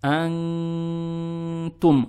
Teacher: произносим букву «н» , пряча её в нос.